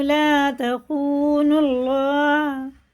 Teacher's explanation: اللہ کا لام پیش سے تو پر ہوگا. تخون اللہ، یہ حرف شمسی ہے، یہ دونوں الف لام واو نہیں پڑھ جائیں گے.